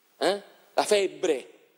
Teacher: in ambiente laziale c'è il raddoppiamento delle dentali e delle labiali